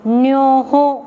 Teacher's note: अपन जो बोलते हैं वो नमोकार का न, मूर्धन्य न है